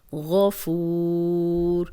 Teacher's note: اب غین موٹا ہے اور فو واو مدہ ہے ، واو مدہ کے بعد ایک حرف اور آگے آ گیا